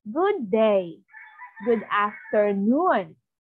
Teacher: Rising, falling intonation, it is normal voice, then it will rise and then it will go down. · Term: slight or inflection